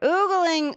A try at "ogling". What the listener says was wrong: Is that oogling or ogling? It's only one O.